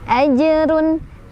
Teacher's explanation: Jimnya sukunnya sukun asli. Cara bacanya dipantulkan, pantulannya kecil aja karena ada di tengah-tengah. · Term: qoqolah sugra